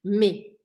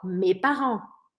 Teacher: Eu não falo esse s mas eu escrevo m e s